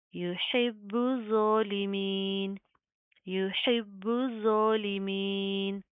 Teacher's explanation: ज़ो के अंदर आपने सिटी पैदा करने से बचाना